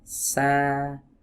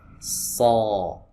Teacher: sa relax bagian belakangnya, tapi huruf shad dia menegang.